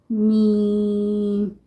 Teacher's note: دونوں ہونٹوں کے بیرونی خشکی والے حصے کو ملانے سے میم کو ادا کیا جاتا ہے۔